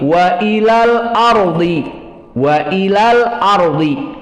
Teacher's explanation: Dan di sini sama hukumnya mad tabi'i jika waqaf. Wa ila, namun di saat disambung dengan al-ardi maka hukumnya mahdhufah, tidak panjang, tetapi wa ilal ardi karena disambung.